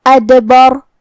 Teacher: کلمت ادبر میں یہاں حرف دال ہے اور اس پہ جزم ہے، تو دال حروف القلقلہ میں سے ہے. قلقلہ کا معنی ہے حرف ساکن کو ہلانا، تو ہمیں دال کو ہلاتے ہوئے یہ کلمہ کو پڑھنا ہے